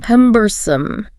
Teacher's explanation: Stress on the first syllable there.